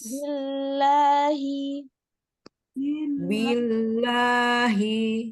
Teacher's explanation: Jangan ke atas ya. Jangan ee terlalu tebal. Enggak boleh tebal. Di situ lamnya tipis.